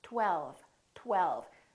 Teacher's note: First, there was a tongue, t, t, t, touching behind my upper teeth. And then we round our lips for the W, tw, tw. And then the tongue goes up again for the L, l, l.